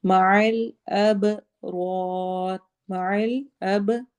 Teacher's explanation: را میں ہم دونوں را کو موٹا کر کے پڑھیں گے · با پہ قلقلہ کریں گے، ایکو ساؤنڈ ہوگی